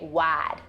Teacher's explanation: African Americans in Appalachia also tend to follow the more general Southern pattern with respect to I monophthongization, ah in wide turning to ah, so you get wide.